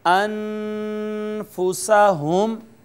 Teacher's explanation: اخفا آواز کے چھپانے کو کہتے ہیں۔ یہاں جو نون ہے وہ ساکن ہے، لہٰذا یہاں پہ ہم آواز کو چھپائیں گے